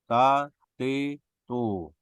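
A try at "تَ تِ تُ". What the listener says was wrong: Hamesnya belum.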